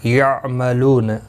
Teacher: لو واو مدہ ہے، ایک الف کی مقدار کے برابر کھینچ کر پڑھیں گے